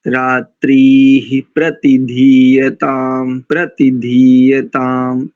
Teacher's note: प्रति में इकार दीर्घ नहीं, ह्रस्व है।